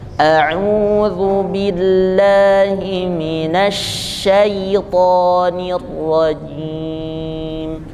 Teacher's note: Nah, beda kalau sh-nya itu memenuhi mulut. Namanya tafashishi, sifat huruf shin yang tidak ada pada huruf yang lain